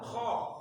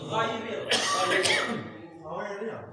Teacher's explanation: Jadi ingat karakter dari kedua huruf yang ada di pangkal tenggorokan ini, kha dengan gha ini harus bergetar.